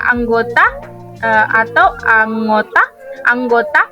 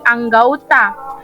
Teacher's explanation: Perubahan ini terjadi pada bunyi vokal tunggal o ke vokal rangkap au, tetapi tetap dalam pengucapan satu bunyi puncak. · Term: diftongisasi